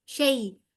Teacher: من شیء، شیء یا لین آ گئی ہے، کیونکہ یا ساکن سے پہلے والے حرف پہ زبر ہے، لہٰذا یہ یا لین ہے اور اس کو تیزی سے پڑھیں گے شیء. اور آگے ہلکا سا جھٹکا ہوگا کیونکہ حمزہ آ گیا ہے، حمزہ کے اوپر حمدے کیونکہ یہاں پہ وقف کر رہے ہیں تو اس کو جزم دے دی جائے گی، اور جب جزم دے دی تو اس کو ہم جھٹکے کے ساتھ یہاں پر فنش کریں گے، ٹھیک ہے.